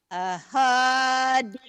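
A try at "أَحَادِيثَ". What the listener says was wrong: Aha, jangan aho. Aha. Aha. Ahaditha.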